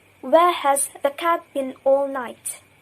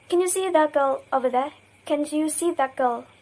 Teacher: t assimilates to k before k or g and d assimilates to g before k or g